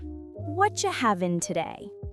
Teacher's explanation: Two words become one. Havin' means having. We drop the G at the end.